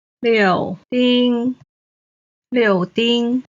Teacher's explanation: 柳 is the third tone. 丁 is the first tone.